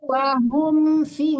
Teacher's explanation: Kalau mim mati Bu, ketemu fa jangan disamarkan ya. Enggak boleh dengung di situ. Jangan menekan gigi ke bibir ya, tapi dimatikan mimnya.